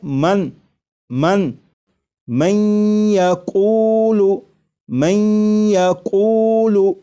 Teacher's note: یہاں پر دیکھیے گا یہ نون ساکن ہے، نون ساکن کے بعد جب یا آ جائے تو نون ساکن کو یا میں ادغام کر کے پڑھیں گے، ملا کر پڑھیں گے، اور نون ساکن کو یا میں ادغام اس طرح کریں گے کہ غنہ بھی ہو، جیسے لکھا ہوا ہے من من من یقول من یقول، تو میم کے بعد آپ کو یہ جو آواز آ رہی ہے میں این این، یہ نون ساکن کا یا میں ادغام بھی ہو رہا ہے، اور ادغام اس طرح ہو رہا ہے کہ غنہ کے ساتھ۔